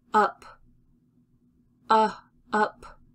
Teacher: my lips are loose and relaxed and the sound is coming from lower in my mouth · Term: short u sound